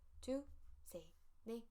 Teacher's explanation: So basically 2 and 3 and 4, the final consonant disappears.